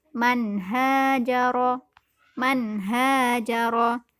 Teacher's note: Pada kalimat ini terdapat nun sukun yang bertemu dengan huruf H, maka dihukumi izhar. Cara bacanya harus jelas.